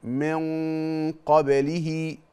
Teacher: النون الساكنة وبعدها قاف، دي بنسميها في التجويد إخفاء حقيقي. والغنة هنا مفخمة، ليه؟ لأن بعد الغنة حرف مفخم.